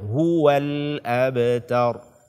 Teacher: tidak akan sempurna bunyi dhammahnya sampai kita benar-benar memajukan dua mulut, dua bibir kita. Sampai kita benar-benar memajukan, memonyongkan mulut kita.